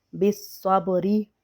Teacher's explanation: با ساکن ہے اور با پہ ہم قلقلہ کریں گے، بالصبری۔ اور را کو بریک پڑھیں گے زیر کی وجہ سے، بالصبری۔